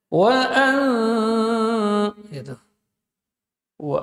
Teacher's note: enggak boleh tebal bagian punggung lidah tidak terangkat ke atas tapi di sini tipis